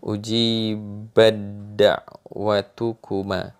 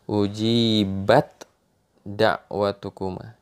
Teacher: Jadi tidak dibaca ujibat da'watukuma. Jadi taknya dibuang sama sekali